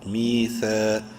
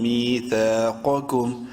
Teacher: دونوں کو ایک ایک الف کے برابر لمبا کرنا ہے، میم اور سا کو